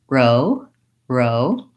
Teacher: a tight back R, tongue braced against the insides of upper teeth and tense tongue. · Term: American R